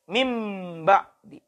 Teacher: ditukar bunyi n dengan bunyi m ditukar bunyi n ke dalam laut menjadi Bunyi mm Min ba'di